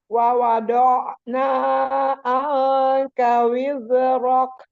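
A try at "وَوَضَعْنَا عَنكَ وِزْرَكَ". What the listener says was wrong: Anka wizrok. Wizrok. Ujungnya gini. Lidah itu nggak boleh ditarik ke belakang. wizrok. Sekarang di ainnya alirkan. Do'na. Anka pakai ain. Anka.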